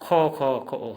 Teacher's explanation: तालवी शो होता है, लेकिन हम उच्चारण करेंगे हम असमिया में तालवी खो। खो, हमेशा स का उच्चारण खो खो होता है असमिया में बोलते टाइम में, लेकिन लिखते टाइम में वही अक्षर रहेगा, बोलते टाइम में खो उच्चारण होगा।